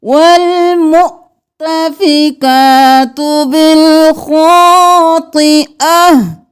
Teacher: हा की आवाज़ आएगी, क्योंकि वक़्फ़ करें तो ता हा में बदल जाता है।